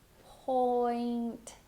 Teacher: For point, you're going to start with your lips rounded and do the diphthong. Point. And then you can hold that T at the end if you want to as well.